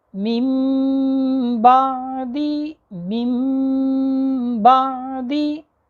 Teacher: نون ساکن اور نون تنوین کو میم سے بدل کر غنہ کے ساتھ پڑھیں گے۔ دیکھیں کیسے میں یہاں پر نون ساکن کو میم سے بدل کر غنہ کے ساتھ پڑھ رہا ہوں۔